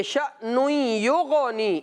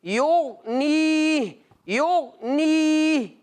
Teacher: غین چونکہ ساکن ہے، اور جب ساکن حرف غیر کلکلہ میں ہو تو کوشش کرنا چاہیے کہ ہمیں اس میں کلکلہ نہ کرنا چاہیے